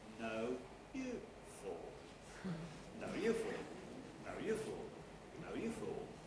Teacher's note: the nucleus again is round about mid pitch maybe a little bit lower then next syllable is quite high doesn't matter whether it's stressed or unstressed it's quite high and